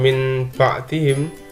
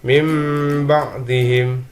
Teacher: Jadi bukan min ba'dihim, jadi nun sukun dilebur ke dalam ba dan suara menjadi suara mim. Mim ba'dihim. · Jadi huruf iqlab itu cuma satu ya, ini cuma ba. Maka suara nun sukun atau tanwin dibalik atau diganti menjadi suara mim sukun